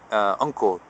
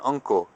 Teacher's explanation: The N as in uncle. This is an N which is further back in the throat. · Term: NG sound